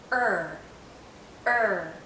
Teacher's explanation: when i say er the central part is going up because the tip is curling back there's some tension in my tongue when i say er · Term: central vowel